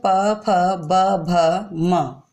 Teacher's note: जिन वर्णों के उच्चारण में वायु निकलते समय अधर तथा ओष्ठ मिलते हैं, उन्हें ओष्ठ वर्ण कहते हैं। अधर निचला होठ, ओष्ठ ऊपर का होठ।